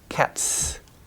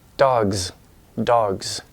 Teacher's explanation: cats the S is pronounced like s but dogs more like a Z